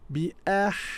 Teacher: We have 2 ha there. One is a ha sukun. Bi ah. You can hear the airy sound.